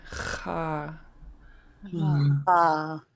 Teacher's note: This underline X is a gravelly sound in the back of your throat.